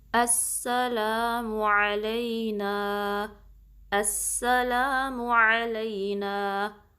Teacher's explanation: سین کی سیٹی واضح کرنی ہے، تھوڑا سا ٹائم دینا ہے سین پہ کیونکہ تشدید ہے، تو اس طریقے سے ہم پڑھیں گے السلام.